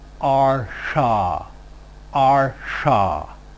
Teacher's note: The retroflex place of articulation is a little bit different because it is still the same place of articulation, post-alveolar, but the tip of the tongue is slightly curled back